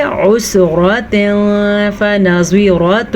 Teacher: ذو عسرۃ، را پر پڑھنی ہے، عین کے مخرج کو واضح کر کے پڑھنا ہے، کیونکہ اگر آپ عین کو واضح نہیں کریں گے تو یہ حمزہ بن جائے گا